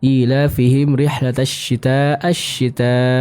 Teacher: wajib al-mutasil dibaca dengan kadar 4 sampai 5 harokat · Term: mad wajib mutasil